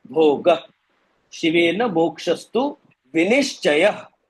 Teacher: ह अक्षर अगर होता तो ह करके अलग से आपको बोलना है, पर ह अक्षर नहीं है, सिर्फ विसर्ग है. तो आपको विसर्ग में ह का खाली इफेक्ट होगा, पर अक्षर का उच्चारण नहीं. भोग यानी ग भी नहीं, ग ह है, पर ह जोर से आपने ज्यादा स्ट्रेस नहीं दिया है, खाली आपने ग के ऊपर थोड़ा वजन दे दिया.